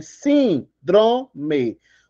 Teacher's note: Última, penúltima, antepenúltima é mais forte, por isso ela é acentuada.